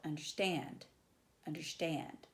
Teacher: anapest is unstressed unstressed stressed